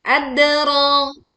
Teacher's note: Dal sukun dibaca memantul dengan suara yang jelas dan miring